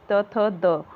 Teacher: द दंत्य है, त थ द दंत की सहायता से बोला जाता है।